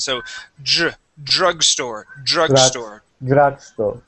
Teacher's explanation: Let's go to drugstore and practice the DR sound. Here we want to replace that DR with sort of like a JR. It's a J sound.